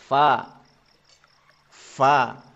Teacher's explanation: pengucapan yang disertai dengan keluarnya nafas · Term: Hames